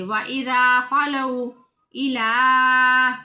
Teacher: واو ساکن، پہلے حرف کے اوپر زبر ہے تو اس واو کو واو لین کہتے ہیں، یعنی لمبا نہیں کرتے۔